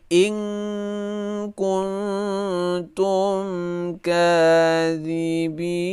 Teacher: In, saat kita baca ing itu, nun yang kita baca itu telah terletak, lidah kita telah berubah menjadi seperti orang ingin membaca kaf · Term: ikhfa